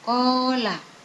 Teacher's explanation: Qala disebut mat tabi'i, panjangnya 2 harokat.